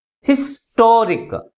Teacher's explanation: Second syllable మిగిలిన syllables కంటే ఎక్కువ ఫోర్స్గా పలుకుతుంది కాబట్టి ప్రైమరీ స్ట్రెస్ని టీ ముందు ఉంచాం అనమాట.